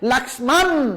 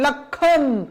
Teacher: এটা হচ্ছে লক্ষ্মণ, আমরা লক্ষ্মণ বলি না, আমরা বলি লক্ষণ, এই জন্য ম বর্ণটা লোপ পেয়েছে, ম বর্ণটা হচ্ছে নাসিক্য বর্ণ।